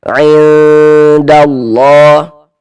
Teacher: Nah, cara membaca ikhfa hakiki dibaca samar. Nah, jadi bunyi nun sukun atau bunyi tanwinnya dibaca samar · Maka ini kita baca karena dia digunnahkan atau didengungkan, sehingga di bagian ada bagian situnya itu kita tahan sejenak suara kita. Kita gunnahkan kira-kira sepanjang 2 harokat. Kita panjangkan sebentar.